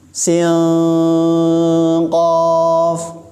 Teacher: Dan huruf qaf kalau ikhfa itu agak dalam.